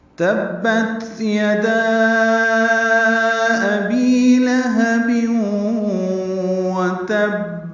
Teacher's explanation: تبت، تا کو با سے ملانا ہے، با کو تا سے ملانا ہے، تا ساکن پہ ہمس ہوگا، سانس جاری رہے گی پڑھتے ہوئے، اس کو ہمس کہتے ہیں۔ یدا میں الف مدہ ہے اور اس کے بعد حمزہ دوسرے کلمے میں آنے کی وجہ سے مد منفصل ہے۔